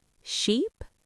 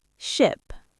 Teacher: If the long e is tense, the short i is lazy. Your jaw drops just a tiny bit. · Sheep is long and high. Ship is short and quick.